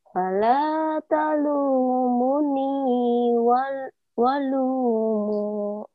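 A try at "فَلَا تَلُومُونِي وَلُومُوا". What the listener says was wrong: Ya, hanya panjangnya. Kurang satu aja, mu-nya panjang.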